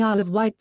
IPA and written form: ˈaɪl əv ˈwaɪt (Isle of Wight)